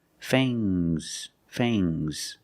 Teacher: Use a long A plus the nasal sound and a soft G.